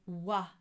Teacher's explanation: there is a bit of an ooo at the beginning but you go straight to an ah sound and you sing on the ah sound right in the middle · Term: wha sound